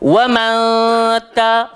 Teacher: lidah kita tak pergi mana-mana lepas tu nak pergi dekat ta baru hujung lidah langgar belakang gigi atas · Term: ikhfa Hakiki